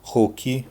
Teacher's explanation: If there is an R at the beginning of a word, in the Brazilian Portuguese version it becomes an H sound.